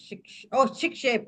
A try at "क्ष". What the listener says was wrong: Ksha. Okay, and the K sound has to come. Ksha would.